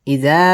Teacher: ইদা মধ্যে তাবাই এক আলিফ টানে পড়তে হবে